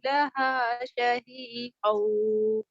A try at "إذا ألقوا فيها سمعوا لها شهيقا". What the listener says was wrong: इस अब देखो, मद को भी आप नहीं खींचिए, थोड़ा-सा इज़ा को लंबा करना है। इज़ा उल्कू फ़ीहा समिअू लहा शहीक़an। إذا ألقوا فيها سمعوا لها شهيقا.